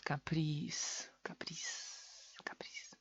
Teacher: Al final de la palabra z se convierte en s.